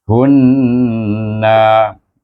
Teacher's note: moncong sedikit mulut kita masa menyebut hu, dan gabungkan dengan nun yang bertasydid, dibaca dengan wajibul gunnah dengan dengung.